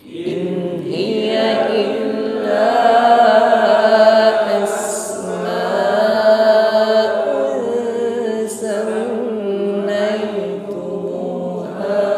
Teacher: Asma'un, dengungkan dhammah tanwin pada huruf sin.